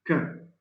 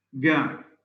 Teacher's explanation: ka, which is voiceless, ga, which is voiced, and hang, which is also voiced. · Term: vela sounds